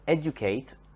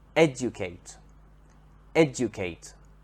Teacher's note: the verb educate educate has the stress on the first syllable